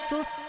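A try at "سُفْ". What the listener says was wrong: জি, এটা আওয়াজটা ধরে রাখতে হবে, জারি রাখতে হবে, আওয়াজটা চালু রাখবেন যেন বন্ধ না হয়ে যায়, সুফ বন্ধ যেন না হয়ে যায়, এটা আওয়াজটা চালু থাকবে। সুফ। সিন ওয়াও পেশ সু। জি, সিন ওয়াও পেশ সু।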